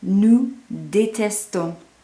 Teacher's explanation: you're hearing that on, that nasal on the end, but this time you don't hear the S because again, there's no vowel, so the S does not slide.